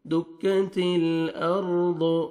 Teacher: را کو پر کریں گے کیونکہ را ساکن سے پہلے فتح ہے